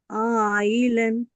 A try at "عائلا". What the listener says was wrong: ఇంకా కొంచెం ఎక్కువ దీర్ఘం తీయాలి. 4-5 హర్కాతులు కావాలి కదా మనకి. నియమం పేరు కూడా చెప్పండి. మద్దల్ వాజిబ్ ముత్తసిల్. అలీఫ్ మద్ తర్వాత హంజా వచ్చింది. మద్దల్ వాజిబ్ ముత్తసిల్. ఒకవేళ షద్దా కానీ లేదా సుకున్ కానీ వస్తే మద్దల్ లాజిం అనేవాళ్ళు.